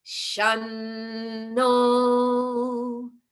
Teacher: originally by itself that word is sham and it ends at the lips however no which follows begins at the teeth · So therefore, sham will change to shan, so that it glides right into the no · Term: double n sound, double N sound